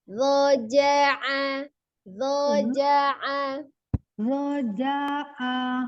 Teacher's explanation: zo-nya ujung lidah ada di ujung gigi seri atas